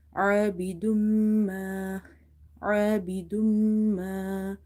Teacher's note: Idgham means to merge the sound. Plus you will do nasalization in the meme sound or the gunna.